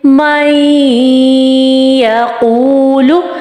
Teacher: نون کی آواز کلیئرلی ہمیں شو نہیں ہوگی جس طرح اظہار میں ہو رہی تھی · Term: غنہ